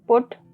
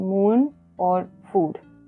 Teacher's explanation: U is a short U. So like in put and OO is a longer one like in moon or food